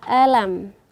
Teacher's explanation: Jadi kita membaca makhraj alam, hamzah, lam dan mim ini semuanya sifatnya itu istifal. Yaitu tak perlu kita angkat lidah kita ke langit-langit atas.